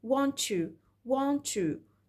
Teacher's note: الت اتحول من كونه بلوسيف بقى افريكت، واليه ساوند كأنه اختفى · برضو الت ساوند اتحولت لتش ساوند